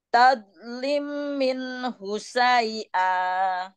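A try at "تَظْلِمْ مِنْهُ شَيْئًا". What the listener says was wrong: Ya, enggak ditahan. Lim, tadi kelewat. Tahan dulu. Tadlim.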